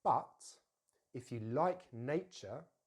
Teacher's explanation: I'm going to stress the but because it's showing contrast here